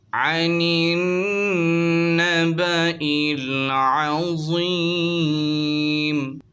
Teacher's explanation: حمزہ اور الف پر کوئی حرکت نہ ہونے کے باعث نون کو ہم ڈائریکٹ نون سے ملائیں گے۔ ملانے کی وجہ یہ ہے کہ نون پر تشدید ہے، تشدید والا ورڈ اپنے پہلے والے ورڈ سے مل کر پڑھا جاتا ہے۔